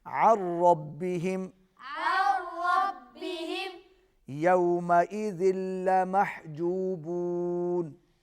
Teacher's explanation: نون ساکن کے بعد را ہے اور را پر تشدید ہے، تو کیا ہوگا؟ عین را کے ساتھ مل جائے گی، نون جو ہے وہ ادا نہیں ہوگا